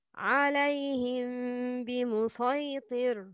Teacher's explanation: If the following letter is ب, it's إخفاء شفوي. Pronouns hidden ميم plus separation between the lips plus غنة.